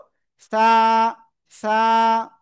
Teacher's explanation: জিহ্বার আগা উপরে দুই দাঁতের আগায় লাগাবো, লাগিয়ে নরম করে উচ্চারণ করব